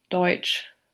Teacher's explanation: the postalveolar affricate ch occurs in the final phoneme of the word Deutsch